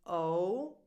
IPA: oʊ